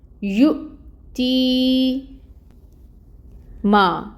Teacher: یؤتی ما، 2 حرکت لمبا، الف مد کا رول۔ کیونکہ الف ساکن سے پہلے میم کے اوپر زبر کی حرکت ہے، تو ما کو 2 حرکت لمبا کھینچیں گے، الف مد ہوگی۔